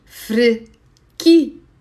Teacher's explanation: And if it's a girl, you say frikia. The stress on ki